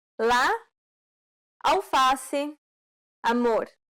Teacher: This vowel sound is very similar to the A in father. This vowel sound is considered an open A sound because the jaw is low